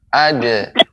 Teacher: Adapun dal, ini hurufnya ya lawan dari isti'la, yaitu istifal, ya, tidak tebal, tipis. Maka adra, tidak adra.